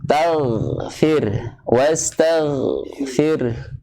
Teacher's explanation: Ya, huruf gha, ghain, ya, termasuk huruf apa? Gha, mempunyai sifat isti'la, ya, termasuk mempunyai sifat isti'la, berarti tebal. Wastag, ya, jangan wastag, tapi wastag, ya, tapi jangan melandai, tapi seolah-olah kayak huruf waw, ada waw sukun.